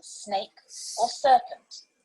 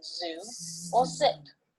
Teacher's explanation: S is the hissing sound in snake or serpent, and z is the buzzing sound in zoo or zip. These are the alveolar fricatives, and they occur when you raise the tip of your tongue to the alveolar ridge, just behind the upper teeth.